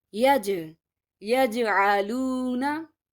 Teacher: I have to just make a bouncing sound or Qalqala sound.